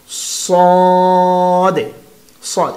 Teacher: প্রথম হরফটা হচ্ছে সাদে, মোটা করতে হবে, অনেক মোটা করতে হবে। সাদে, সাদ, এটার মাখরাজ হচ্ছে জিব্বার আগা সামনের নিচের দুই দাঁতের আগার দিকে লাগাতে হবে